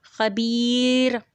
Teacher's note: جب را ساکن ہو اور اس سے پہلے یائے مدی ہو، تو اس کو را کو باریک پڑھیں گے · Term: ترقیق را